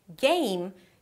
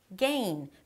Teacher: M turns to N at the end of words. In Spanish, there is the 'M' consonant sound but it never appears at the end of words.